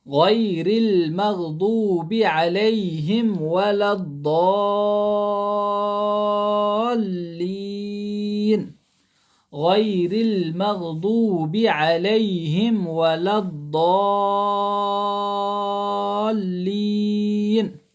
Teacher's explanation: ضا میں 6 الف کے برابر کھینچنا ہے، لین کو 3 الف کے برابر کھینچنا ہے